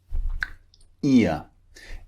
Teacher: it starts with the mouth wide and ends with the mouth in a relaxed position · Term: diphthong